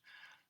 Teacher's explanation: remember ends in an ah sound which is a vowel all vowels are voiced